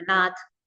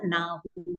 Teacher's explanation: नाथ का ना हो हो जाएगा थ को ह हो जाएगा